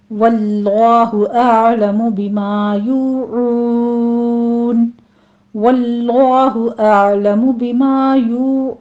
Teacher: वल्लाहु में लफ्ज़ जलाला को पुर पढ़ना है